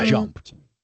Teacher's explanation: if a word ends in a certain sound like a P and we want to make a past tense, when we add the ED it sort of makes like a T sound at the end